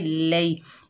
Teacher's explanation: ये या लीन है, इसको नरमी और जल्दी से अदा करेंगे